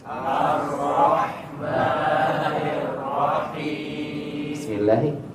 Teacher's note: الراء يخرج منها من طرف اللسان وظهر اللسان، ولا نحرك الشفتين